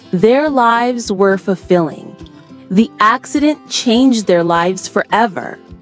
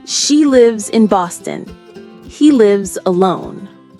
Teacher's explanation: When it's the plural of life, it's pronounced like wives with a long i sound.